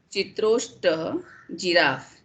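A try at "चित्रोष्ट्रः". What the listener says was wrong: Chitroshtraha. Repamsha is there. Chitroshtraha.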